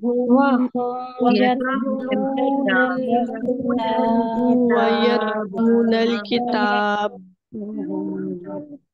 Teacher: आप बा की वजह से आपने होठ बंद किए और आवाज रुक गई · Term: शिद्दा